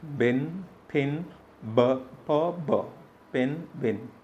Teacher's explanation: this is a bilabial sound